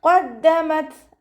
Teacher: ത സുക്കൂനിലാവുമ്പോൾ കുറച്ച് എയർ പുറത്തോട്ട് പോണ സൗണ്ട് കൊടുത്തിട്ട് ഉച്ചരിക്കാൻ ശ്രദ്ധിക്കുക